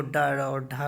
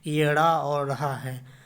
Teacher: ये अड़ा और अढ़ा ध्वनियाँ मूर्धन्य तथा उच्छिप्त ध्वनियाँ हैं